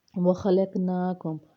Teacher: نا میں کھڑا زبر ہے، ایک الف کے برابر لمبا کریں گے